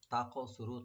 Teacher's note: তা ওপেন রেখে কাফটাকে একটু ডিপ করে একটু কলকলা হবে এখানে